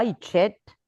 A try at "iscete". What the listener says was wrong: Iscete, c'è una S davanti, iscete.